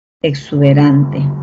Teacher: Tengo la E, luego tengo la oclusiva, y luego tengo la sibilante